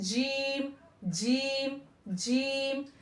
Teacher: जीम को जब हम करेंगे तो टच करके हम आवाज़ को क्या करेंगे? छोड़ देंगे। यानी हमने टच किया जीम, तो हमने आवाज़ को छोड़ दिया।